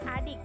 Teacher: bunyi I dengan ciri-ciri agak tinggi, tak bulat